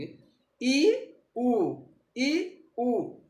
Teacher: इ में आगे का भाग सक्रिय हो रहा है उ में पीछे का भाग सक्रिय हो रहा है